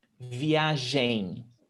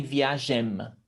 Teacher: in portuguese we don't pronounce the m at the end of words never we turn it into a nasal sound